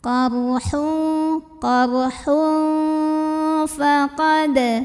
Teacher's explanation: Maka cara baca tanwinnya adalah disamarkan ya. Samar-samar menuju huruf fa disertai dengungan. Dengung dan samarnya seimbang. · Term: ikhfa awsat